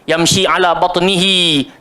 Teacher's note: Kalau ya tu dia bersambung dengan ha, baru kita baca 2 harakat. Bunyikan huruf ha tu, yamshi ala batnihi.